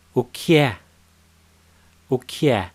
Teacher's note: the pause button okey see y40 as you notice here that there isn't a gap between the first key and air they kind of merge